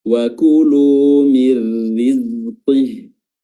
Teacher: nun sukunnya dimasukkan ke huruf ra bila gunnah, tidak disertai dengan gunnah. Ya, tidak ada suara dengung, suara hidung ataupun durasi yang ditahan. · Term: idgham